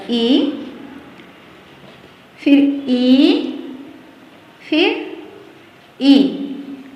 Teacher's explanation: ह्रस्व दीर्घ प्लुत, ये तीनों स्वर ई से हो जाएंगे